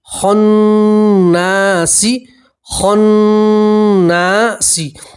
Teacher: گنہ کے لیے آپ نون کی آواز کو 2 سیکنڈ کے لیے ناک میں روکے رکھیں گے، اس سے گنہ ادا ہوگا